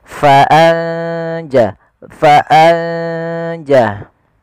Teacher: ikhfa membaca di antara keduanya yaitu samar-samarkan nunnya atau biasanya ada mengantinya dengan ng